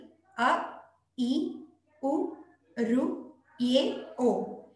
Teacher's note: ಈ 6 ಅಕ್ಷರಗಳು ಒಂದೊಂದು ಮಾತ್ರ ಕಾಲದಲ್ಲಿ ಉಚ್ಚರಿಸಲ್ಪಡುವುದರಿಂದ ಹ್ರಸ್ವ ಸ್ವರಗಳು ಎಂದು ಹೆಸರು